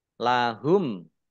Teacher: mim sukun bertemu dengan huruf kha bacaan izhar safawi dibaca jelas